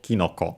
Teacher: In this case, it becomes a compound, and even though technically ki would be accented, and so with the following no would become unaccented technically, but here it becomes a compound already as is, and so the accent is actually on the first syllable